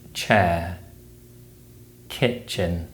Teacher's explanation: The Ch sound is produced by blocking and releasing air with the tongue behind the ridge of the mouth, and it's usually spelled with the letters CH in words such as chair, kitchen.